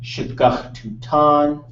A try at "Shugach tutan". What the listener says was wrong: That should be high tone right there.